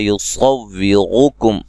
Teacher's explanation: صاد کو موٹا ادا کریں گے ، را کو موٹا ادا کریں گے، را کے اوپر پیش